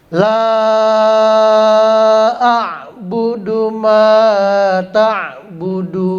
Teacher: Nah, panjangnya juga berubah jadi 5 ya. Tadinya 2 sekarang 5 karena menjadi mad jaiz munfasil. · Ma itu cuma 2 harokat, beda dengan la panjangnya.